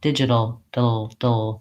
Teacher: my tongue just stays in the spot for the D for the flap T and finishes into the L with a back of my tongue dropping so it sounds like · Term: syllabic l